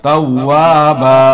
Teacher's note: انہو کان توابا، زبر کو جلدی پڑھیں، تھوڑا بھی نہیں. توابن ہے، دو زبر پر وقف کریں گے، ایک زبر کے ساتھ پڑھا جائے گا